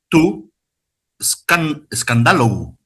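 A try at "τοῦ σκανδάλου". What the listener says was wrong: Escandalú. Escandalú. Acuérdese que si pongo es una U.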